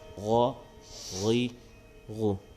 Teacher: غین موٹا پڑھیں گے، حروف مستعلیہ میں ہے